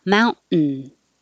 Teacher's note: the same place just hold it there instead of mount ten you're just not releasing it and holding it in the t position and making the noise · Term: syllabic end